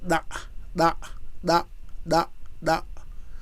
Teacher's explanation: it comes from the tongue tip and the alveolar ridge